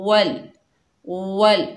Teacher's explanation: होठों को मुकम्मल गोल करेंगे वाव को अदा करते वक़्त।